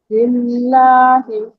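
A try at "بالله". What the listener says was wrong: ये आवाज दे अभी सही आवाज निकाला आपने अभी जरा भी आपको दांत फटा से नहीं किया जुबान अभी फिर हो गया चलो इसकी आप प्रैक्टिस करिए बस वही पहचाने कि आप जुबान नहीं लगाएंगे ऊपर में तस्मिया पढ़े अब इस जगह भी लफ्जुल जलाला उसी तरह अदा करेंगे जुबान की नोक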